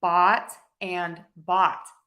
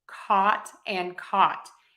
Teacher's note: bot and bought I pronounce them exactly the same hot and caught exactly the same